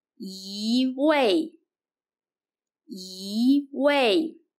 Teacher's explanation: When 一 is followed by a fourth tone, 一 changes to the second tone